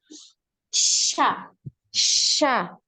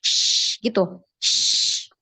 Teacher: Tengah lidah anti itu naik ke langit-langit di atasnya.